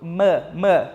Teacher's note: um som bilabial então encosta um lado no outro · E eu vou explicar para vocês. O som do M aqui, que é o M, é um som bilabial. Então, eu encosto um lábio no outro.